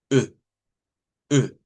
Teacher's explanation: O una letra O con una tacha. Es una E cerrada redonda.